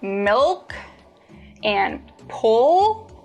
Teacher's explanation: when you produce the dark L the back of your tongue bunches